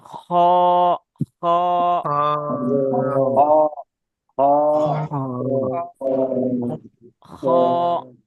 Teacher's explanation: ওটা ওইরকম আওয়াজ দিয়ে পড়তে হবে, খ, খ, খ। এটা এই যে গোলার মুখের দিকে অংশ, এখান থেকে উচ্চারণ হবে খ